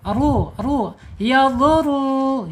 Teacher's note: penekanannya di huruf roya dibaca tebal ya karena harakatnya domah. Ru ru yaduru ya getarannya ingat tidak boleh melebihi dari tiga ya.